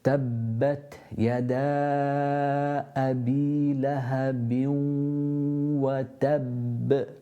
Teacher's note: Some people say it makes more of an echo or a qalqala, some don't, but you need to make sure that you're pronouncing 2 bas at the end of the verse. Tabbat, feel that burst of air.